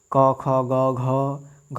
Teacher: घ देख रहे हैं आपके कंठ से आ रहा है